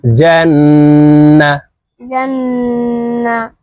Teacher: তো এই জিম তাসদিদওয়ালা নুনের সাথে গুন্নার সহিত পড়তে হবে, নাকের বাসি থেকে 3 সেকেন্ড পরিমাণ ধরে রাখতে হবে